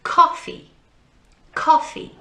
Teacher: we put the emphasis the stress on the first part of the word